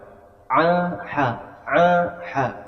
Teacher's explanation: Bukan ha, bukan kha, tapi ya. Jadi dirasakan dari tengah tenggorokan.